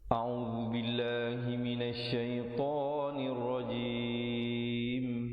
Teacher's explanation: Tanir rajim, nun baris bawah terus naik di atas ra yang bersabdu dan diwaqafkan dengan ditutup mulut rapat untuk menyempurnakan bunyi mim dengan kadar 2, 4 atau 6 harakat.